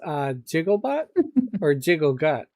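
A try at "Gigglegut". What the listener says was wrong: No. Giggle. Not jiggle. G, not a J. Giggle.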